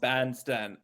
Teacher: when we make this ah sound the front of the tongue is really far away from the roof of the mouth